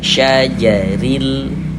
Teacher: Huruf ro itu kalau dia memiliki harakat kasrah ya, memiliki tanda baca kasrah maka huruf rnya dibaca tipis dibaca tarqik. Jadi tipiskan huruf rnya syajaril. · maka huruf ra-nya dibaca tipis, dibaca tarkik. Jadi tipiskan huruf ra-nya.